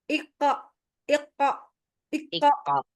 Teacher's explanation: Jadi biarin aja lepas dari dia nempel kan pangkal lidah ya. pangkal lidah belakang nempel ke langit-langit lunak tuh. Habis itu biar aja dia turun gitu. Tapi enggak pakai bibit. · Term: qalqalahnya